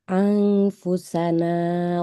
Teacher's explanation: Ikhfa. Jadi kalau ikhfa suara nunnya itu harus samar